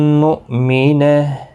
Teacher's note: حمزہ ساکن کو جھٹکے کے ساتھ پڑھیں گے